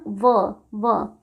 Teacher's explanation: तो व का उच्चारण दंत प्लस ओष्ठ यानी दंतोष्ठ से होता है